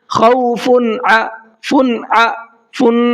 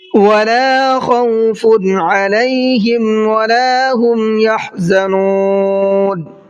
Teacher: ولا خوف علیہم ولا هم یحزنون، ولا خوف خا کو حلق سے نکالنا ہے، خوف نہیں پڑھنا ہے، اور فا کے اوپر تنوین ہے اور تنوین کے بعد میں عین آ رہا ہے جو اظہار کے 6 حروف میں سے ایک حرف ہے عین، تو یہاں پر تنوین کی آواز کو صاف صاف پڑھیں گے، غنہ اخفا کچھ بھی نہیں کریں گے